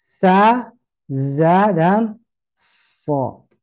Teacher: Ujung lidah mendekat atau mengarah ke ujung gigi seri bawah